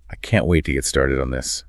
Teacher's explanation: they say in a completely flat robotic emotionless tone · in a completely flat, robotic, emotionless tone, "I can't wait to get started on this." The speaker has deliberately stripped away all the prosodic clues. · There's no rising and falling pitch. The acoustic surface is perfectly flat. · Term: deadpan delivery, Deadpan delivery